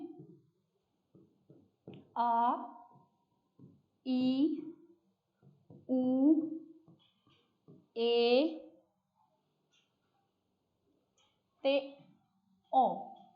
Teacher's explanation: अगे है जी जिन्हां नूं बोलदे टाइम दो मात्रावां दा समा लगे, जिन्हां नूं बोलदे समय दो मात्रावां दा समा लगे, वो हुंदे आ दीर्घ स्वर, मतलब लंबे स्वर। जिन्हां नूं बोलदे समय साडा थोड़ा जिहा जिहड़ा साह भी बिल्कुल लंबा चलिया जाए, आवाज़ लंबी आवे, दो मात्रा जिन्ना समा लगे।